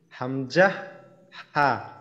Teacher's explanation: 1 নম্বর মাখরাজ, হলকের শুরু হইতে